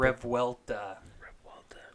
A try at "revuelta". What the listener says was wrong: You got to roll the R though.